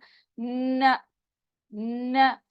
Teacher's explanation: नून अदा करते हुए नाक में भी आपको फील होगा